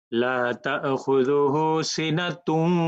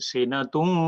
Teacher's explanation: তাহলে লা তাখুযুহু সিনাতুম, দেখেন এটা গুণনা হবে, নাকের ভিতরে যাবে